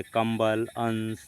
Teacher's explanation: यानी जो अनुस्वार है उसका उच्चारण स्थान केवल नाक से निकलती है।